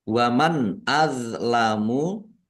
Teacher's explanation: nun sukun bertemu dengan huruf alif bacaan izhar. Izhar dibaca jelas. D sukun bukan qalqalah.